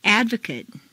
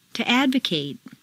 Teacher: The stress stays in the same place, but the MAT in an adjective is completely reduced to mt, whereas in a verb, it's a full A sound, mate.